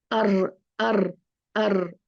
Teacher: मजबूत रखनी होगी यहां से थोड़ी ढीली रखेंगे आप तभी ये थोड़ा सा गैप पैदा होता है हवा निकलती है और उसके साथ में तक रार निकलती है